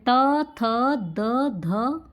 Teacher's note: जब जीभ हमारी दांतों का स्पर्श करती है, वो दंत व्यंजन कहलाते हैं।